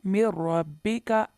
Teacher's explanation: इसकी पहली ही मिसाल है मिर रब्बिका। देखें, नून साकिन के बाद रा आया, जहाँ यहाँ हमने गुन्ना नहीं किया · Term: इदगाम बिला गुन्ना